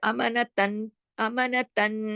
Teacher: یہ جو تا 2 زبر تن ہے اس کو آگے نون پہ تشدید ہونے کی وجہ سے اس نون میں جوڑ دیں گے